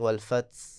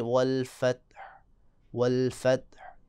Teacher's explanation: اب دیکھیں اکبر، آواز بالکل بریک لگے گی، اکبر، یہ غلط ہوگا۔ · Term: صفت شدت